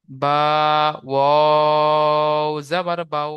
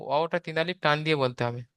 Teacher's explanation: ওয়াওটা তিন আলিফ টান দিয়ে বলতে হবে।